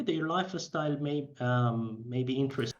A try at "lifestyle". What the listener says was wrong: And notice this life is style. So we don't get lifestyle, f together. Lifestyle, lifestyle. Again, this Iranian thing of life is style, life is style, is style, is style. I guess, yeah, just listen to it again. See if you can hear it. Life is style. The life is style.